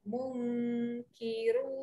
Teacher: Mung, naik. Lidah dia tak dalam sangat. Di atas untuk huruf kaf.